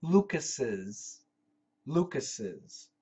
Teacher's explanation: Even though there's only one S, we pronounce 2 S's.